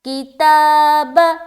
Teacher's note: بیچ میں آ جا رہا کھڑا زبر، یہاں پر ہم کھینچ رہے ہیں 1 الف کے برابر